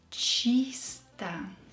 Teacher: Unstressed O will be pronounced as A.